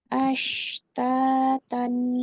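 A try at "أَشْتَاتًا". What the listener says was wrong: nah ini tidak dengan bibir nih, bukan ash. Kalau ash itu DP bibir ikut apa ya, meliuk-liuk. Ash tipis saja. Ash DP posisi bibir sama dengan pada saat huruf sin biasa. Ashtatan.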